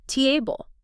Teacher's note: Stress on the first part.